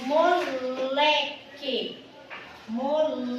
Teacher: O Lé é a sílaba mais forte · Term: sílaba tônica